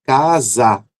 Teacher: Então há uma força ali, fazendo com que esse S, que é surdo, se torne sonoro, transforma ali esse som em um som de Z, que também é sonoro